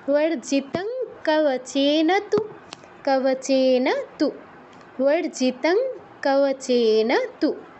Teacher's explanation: অনুসারের পর ক আছে, তো ঙা হসন্তর মতো উচ্চারণ হবে